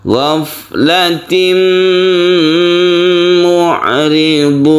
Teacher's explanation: Tanwin ini suaranya masuk ke mim sehingga timbullah tasydid mim. Karena ada tasydid di dalam huruf mim maka dibaca gunnah, maka disebut idgham bi gunnah.